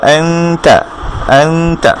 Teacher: ঠিক আমরা যখন আনতা গুন্নাটা করছি, এই নুনের জন্য আমরা নুনের মাখরাজের কাছে না রেখে তায়ের মাখরাজে নিয়ে যাব নিজের জিহ্বাকে, তারপরে আমরা উচ্চারণ করব আনতা আনতা। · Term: ইকফা